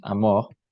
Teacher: Le R est prononcé fortement, même à la fin d'un mot. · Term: vibration claire du R